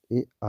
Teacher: कंठ तालव्य ए आए, कंठ तालव्य दोस्तों जो है ए आए हैं, क्योंकि आ जो है कंठ से निकलता है, आ कंठ से, और ई जो होता है तालु से होता है, तालु से, इसलिए आ धन ई मिलकर ए बनाते हैं। तो ए और ऐ का उच्चारण स्थान कंठ तालु से होता है